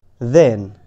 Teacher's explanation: এবং দেন এইখানে টিএইচ দ এর মতো উচ্চারণ হয়েছে, সেম স এর মতোই উপরের পাটি নিচের পাটির দাঁতের মাঝখানে জিহ্বা নিয়ে হালকা পিছনের দিকে নিয়ে আসতে হবে।